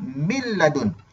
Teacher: Maksudnya masuk tanpa dengung. Makna nun mati jumpa dengan lam, kita terus masukkan nun itu ke dalam huruf lam. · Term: idgham bila gunnah